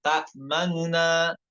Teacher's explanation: Namun ternyata yang wajah muqaddam, cara yang lebih diutamakan adalah dibaca dengan ikhtilas, yaitu contohnya ta'manuna yang hanya bisa mendengar orang yang dekat dengan kita saja ya. itu dengan sepertiga dhammah pada huruf nunnya